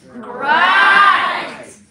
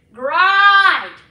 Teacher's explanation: in Scotland, they would say the same word in a similar fashion, but with much more emphasis on the R sound